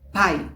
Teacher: Você vê que a força da pronúncia tá no A.